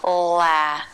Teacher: the tip of the tongue goes down behind the bottom front teeth the jaw drops open and the back of the tongue lifts hola then we close the jaw and the teeth come together